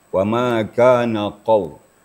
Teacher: bahawa makhraj qaf itu adalah di pangkal lidah. Artinya kalau kita baca qaf, maka pangkal lidah kita naik, naik ke atas.